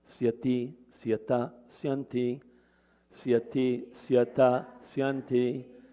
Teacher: So you see the endings there begin with a dental sa when they're all by themselves.